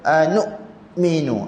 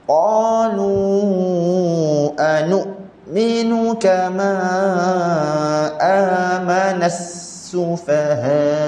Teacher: Bila dekat hamzah tu, suara kita stop sekejap.